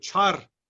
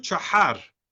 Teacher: çar veya Siverek'teki telaffuzu çahar. Bu gırtlaktan gelen H sesini Kuzey Zazaları telaffuz edemez.